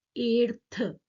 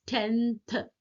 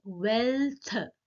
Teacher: It is an alveolar consonants that are dentalized before the dental consonants. तो जब हम इन वाले वर्ड्स को बोलेंगे, जब हम इन वाले एलोफोन्स को प्रोनाउंस करेंगे, तो हमारा क्या है, somewhere our teeth and tongue, they both are playing their roles majorly.